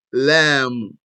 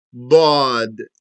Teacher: The bod is from the side of the tongue beside the molars, whether the right side or the left. The lam is from the side of the tongue where bod ends and takes the rest of the tongue, meaning from the front.